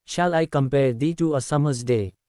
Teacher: is a line in poetry which contains five metrical feet and follows the pattern of unstressed syllable followed by stressed syllable